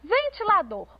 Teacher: última sílaba tônica a gente tem uma palavra oxítona